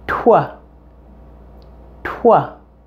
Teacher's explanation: of two consonant sounds both a tea and a W so your mouth will actually pronounce the T with the rounded lips of the W sound · The T and W are combined into one sound here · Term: blend of two consonant